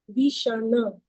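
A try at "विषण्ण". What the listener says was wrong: Now, when it comes 2 times, then we have to give more stress on that. So it should be Vishanna. Na should be stressed.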